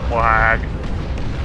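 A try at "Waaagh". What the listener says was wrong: It's not wag, it's wah. The GH is silent.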